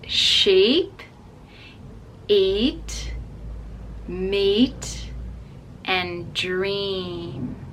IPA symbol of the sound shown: i: